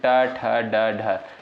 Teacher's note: जो ट वर्ग के अंतर्गत जो भी वर्ड आपके आते हैं, जैसे ट, ठ, ड, ढ, इनका उच्चारण जो है मूर्धन्य से होता है।